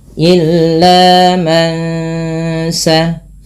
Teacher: Suara nunnya di sini awalnya man. Ketika bertemu sin, nunnya disamarkan kepada bunyi sin, terdengar bunyi eng. Maka ini kita namakan dengan bacaan tajwidnya ikhfa hakiki.